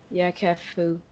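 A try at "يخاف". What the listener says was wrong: Yakhafu. Alif madda. Look, there is a fatha before alif, so this is not simple alif. This is alif madda, elongated.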